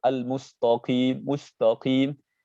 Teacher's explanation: Contohnya di kalimat al-mustaqim, itu rahasianya kenapa kok sering al-mustaqim, mustaqim. Kenapa huruf sinnya kok jadi tafkhim? Ikut ke taknya juga jadi tafkhim, sinnya jadi tafkhim. Kenapa? Karena setelahnya ada huruf qaf. Huruf qaf itu huruf tafkhim.